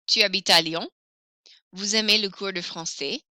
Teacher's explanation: To make these statements into questions, I will lift my voice at the end. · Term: intonation